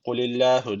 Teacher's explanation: Allah lafzı burada ince okunması gerekiyor. Çünkü öncesindeki harfin harekesi altta. Bir elif uzatıyoruz ve peltek.